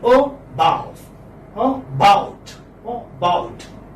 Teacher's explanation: This is a central, unrounded, because you don't round your lips, central, unrounded vowel occurring between half closed and half open position. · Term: schwa